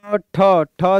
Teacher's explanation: द्वितीय अघोष भी है और द्वितीय महाप्राण भी है